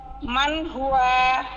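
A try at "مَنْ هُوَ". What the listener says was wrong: মান হুয়া, ওয়ার মধ্যে আবার টান দিছেন কেন? ওয়ার মধ্যে কি টান আছে?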